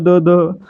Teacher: ज्यामध्ये आपली जीभ आपल्या दातांना स्पर्श करते, म्हणजे हा काय तर दंत्यवर्णांचा गट आहे.